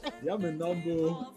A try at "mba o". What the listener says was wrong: Mba o. Que ce n'est un coup de glotte, ce n'est pas mbo, mais c'est mba o.